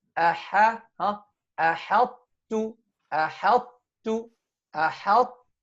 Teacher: Because we don't merge the ta completely into the ta, right? So we keep the إطباق of the ta, أحط, but without قلقلة. أحط. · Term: إدغام ناقص